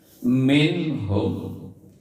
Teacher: Minhum, nun mati ketemu ha, maka dibaca izhar, harus dibaca jelas.